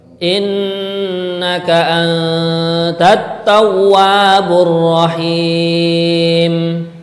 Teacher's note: pada kalimat at-tawwa ini dipanjangkan dua harokat mat tabi'i · Dalam kalimat ini ada dua yang mendengung innaka kemudian anta